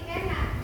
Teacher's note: Vokal E seperti enak adalah tengah depan.